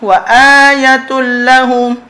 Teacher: tanwin bertemu dengan lam idgham bilagunnah